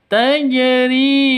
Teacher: huruf ri dilafalkan panjang selama dua ketukan. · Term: mad asli